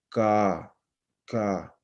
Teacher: Velares, ya casi, ya entrándonos un poco hacia la garganta